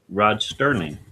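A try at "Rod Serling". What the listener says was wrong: No, no T. Sterling, Serling. I remember Sterling, but it was never Sterling. It was always Serling.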